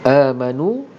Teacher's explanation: mad badal dibacakan itu dengan dua harokat